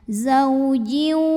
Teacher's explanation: Maka tanwin kasrahnya masuk atau lebur ke waw disertai dengung. Jadi bunyinya zaujiu dan tahan bunyinya. Zaujiu, ada suara masuk hidungnya. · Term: idgham bi gunnah